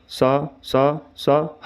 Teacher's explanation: जब हम सा हा बोलते हैं तो वायु मुख के संकरे मार्ग से घर्षण रगड़ करती हुई बाहर निकलती है, जिससे सांस में गर्माहट या ऊष्मा आ जाती है। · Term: संघर्षी व्यंजन, ऊष्म व्यंजन